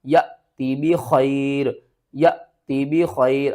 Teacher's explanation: یہاں پر الف والی حمزہ ساکن ہو رہی ہے تو اس کو بھی ہم نے جھٹکے کے ساتھ پڑھنا ہے.